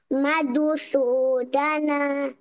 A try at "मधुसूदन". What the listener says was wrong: Power is not sufficient. Madhu, Dhu. No, from the belly, bring the air out. Dhu.